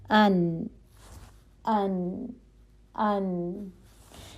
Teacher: हवा का चलना महसूस नहीं होता है तो इसमें जहर की क्वालिटी है · ان ان ان. ٹھیک ہے، ہوا کا چلنا محسوس نہیں ہوتا ہے، تو اس میں جہر کی کوالٹی ہے